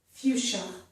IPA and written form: fjuʃə (fuchsia)